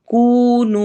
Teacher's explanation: کونو ایک جتنا لمبا کرنا ہے، واو مدہ ہو رہی ہے دونوں پہ